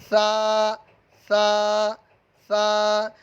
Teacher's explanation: سا کو ادا کرتے وقت سیٹی کی طرح آواز نہیں نکالنی۔ زبان کا سرا اور اوپر کے دانتوں کے اندرونی کنارے سے یہ سا ادا ہوگا، سا سا سا۔